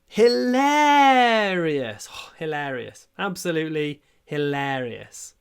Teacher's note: These r vowels, they can be stretched a lot.